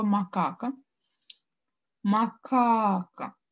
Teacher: я удлиняю второй слог то есть вторую а значит второй слог в слове макака будет ударным